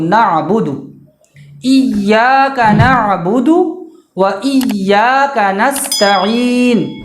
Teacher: نعبدو کے دال پہ جو پیش ہے اس پیش کو ہر حال میں جلدی پڑھنا ہے. ویسے تو ہر جگہ پیش کو جلدی پڑھنا ہے، لیکن یہاں پہ بالکل دھیان رکھنا ہے ورنہ نعبدو ہو جائے گا، وہ دال کے پیش کو بڑھائیں گے تو ایک حرف زائد ہو جائے گا اور معنی چینج ہو جائے گا۔